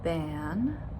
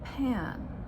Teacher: the difference between the vibrating sound and the uh very um breathy sound with air